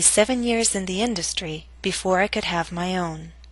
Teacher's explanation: your voice must reach a lower note on own compared to industry on must reach a lower pitch to signal the end of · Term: falling intonation